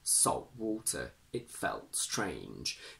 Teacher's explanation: vowel plus l plus t plus a consonant, instead of removing t completely, we use a glottal stop. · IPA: /ʔ/